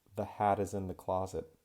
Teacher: if I say something like the hat is in the closet, then when I do that, I link the T over . It's not a very strong aspirated T, it's that flap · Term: flap T sound